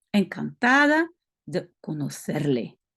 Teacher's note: le C, c'est un peu comme si on a un cheveu sur la langue en espagnol. C'est plus un th qu'un s.